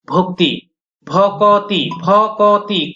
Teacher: এখানে আমরা একটা আলাদাভাবে স্বরধ্বনি উচ্চারণ করছি, এটাকেও বলা হবে মধ্য স্বরাগম